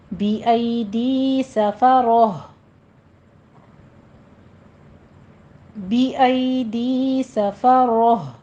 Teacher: بی ای ڈی کو تھوڑا کھینچیں گے، 2 کاؤنٹ کرنا ہے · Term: یا لین